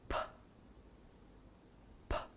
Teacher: The position of articulation is the same as that of B, but the air is released forcibly with a puff